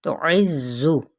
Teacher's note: زا سفیریہ لیٹر ہے، اس کو سختی سے پڑھتے ہوئے زا کی پیش کو لمبا نہیں کریں گے